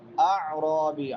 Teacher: عین حروف حلقی میں سے وسط حلق سے